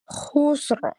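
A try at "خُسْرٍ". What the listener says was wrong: Iya, ro-nya sudah ada tapi belum tebal. Khusru. Khusru.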